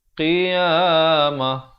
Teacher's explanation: ta marbutah bila kita waqafkan dia dibunyikan ha ya, kerana waqaf.